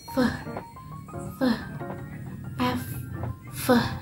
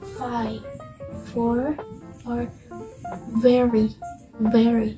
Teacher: In a labiodental consonant, when the lower lips approaches or touches the upper teeth